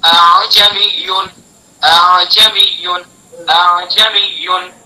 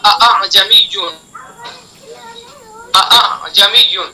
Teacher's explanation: پہلے حمزہ کو تحقیق سے صاف پڑھیں گے واضح، اور دوسرے حمزہ کے اندر ذرا نرمی کریں گے. اس طرح سے اعجمیون اعجمیون اعجمیون. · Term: تسہیل